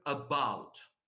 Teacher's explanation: the second part of the word is stressed · So here, because we know that the stress should fall on the second part, on the second syllable, if you want, of the word